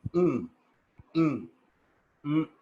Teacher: when the mouth gets closed, the air is released through nose. That is called nasal sound.